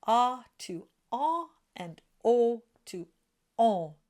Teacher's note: The soft palate then drops down ever so slightly. Air goes through the nose, which is what gives it its nasal quality, and you go from ah to en and o to on. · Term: nasal vowels